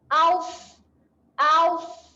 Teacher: sod sukun, kita bunyikan aus. Muncung sikit mulut supaya bunyinya tebal.